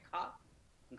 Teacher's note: कहीं ना कहीं हल्का सा हा आपको अनुभव होगा बोलते समय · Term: महाप्राण धुनिया